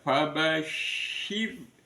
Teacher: syin itu pangkal lidah nekan ke langit-langit. Kemudian angin keluar menyebar di bawah lidah. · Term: shin